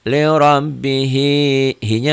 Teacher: ini ya r-nya dibaca tebal